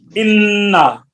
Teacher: نون میم مشدد ہو تو غنہ ہوتا ہے، انا ایک الف کی مقدار میں